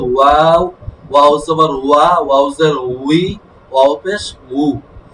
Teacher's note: ওয়াও এর সর্বাবস্থা ঠোঁট গোল হবে। শুধু হরফ পড়লে গোল হবে ওয়াও, ওয়াও জবর ওয়া, ওয়াও জের উই, ওয়াও পেশ উ।